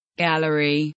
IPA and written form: ˈɡæl.ər.i (Gallery)